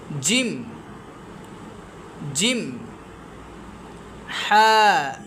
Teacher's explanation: জিমটা হবে একটু শক্ত। সিদ্দতের হরফ শক্ত।